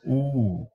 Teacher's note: the tongue is going to be lifted way back and up · the lips themselves will protrude and that will elongate the vocal tract to the longest level that it has